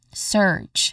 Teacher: there's a hissing sound in the beginning which is the s sound